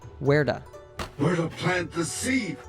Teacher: To is a function word, and not only does it get reduced here, but we also link it to the word where. What happens though is that the T sound is between two vowels, so it turns into an American T sound. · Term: connected speech